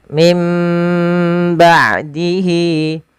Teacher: suara nunnya diganti dirubah menjadi huruf mim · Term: bacaan iqlab